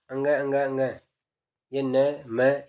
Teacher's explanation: इनका उच्चारण करते हैं तो नाक से अपनी ध्वनि निकलती है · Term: नासिक व्यंजन, नासिकी व्यंजन